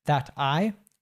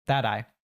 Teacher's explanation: when we have a t in American English between two vowel sounds so here between a and an i it usually changes to a D sound so instead of it being that I it's that I don't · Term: American T